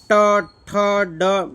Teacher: મૂર્ધનની અંદર આપણી જીભ છે ને વળશે જીભ આપણી અંદર વળશે ટ ઠ ડ જ્યારે જીભ વળે ને તો જ મૂર્જનને નીકળે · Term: મૂર્ધન્ય